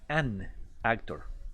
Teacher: La única diferencia es que para evitar ese choque de sonidos, yo le agrego una N ahí en medio.